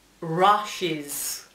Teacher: la U dentro de la palabra en la mayoría de los casos se pronuncia como una A